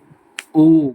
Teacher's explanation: कंठोष्ठौ, कंठ और ओष्ठ हमारे गले से और ओठ को मिलाकर जिन वर्णों का उच्चारण होता है, जैसे ओ गले से आवाज आ रही है और होठ भी गोल हो रहे हैं